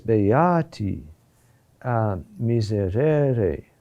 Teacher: Notice that the accent is on a higher note, always beati, miserere, which corresponds to the natural intonation of the word. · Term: up pulse accents